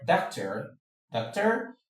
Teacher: In the word doctor, doctor, the o r at the end of the word is a schwa sound